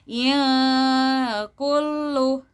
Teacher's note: ada ikhfa hakiki, yang mana ada nun sukun atau nun mati bertemu dengan kaf, yang mana dibacanya harus disamarkan. Jadi nun sukunnya dibaca disamarkan.